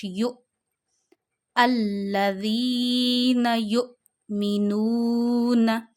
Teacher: حمزہ ساکن میں آپ ہمیشہ جھٹکا دے کے پڑھتے ہیں